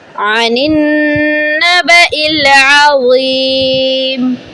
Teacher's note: ان کی آواز کریکٹ نکالا کریں، اس کو حمزہ سے نہیں مشابہ دیا کریں۔ یہ عین اور حمزہ مختلف مخارج ہیں۔